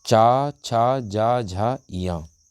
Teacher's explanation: तो चा वर्ग की बात करें तो ये सब बोले जाते हैं तालु से